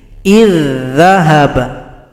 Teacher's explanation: berjumpa dengan huruf dza yang tasydid idgham mutamilain maka di sini huruf dza yang pertama tidak dibaca karena telah gabung pada huruf dza yang kedua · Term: Idgham mutamathilain